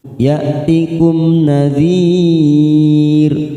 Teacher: ya'tikum mim sukun bertemu nun, namanya idhar safawi kita baca jelas tanpa mendengung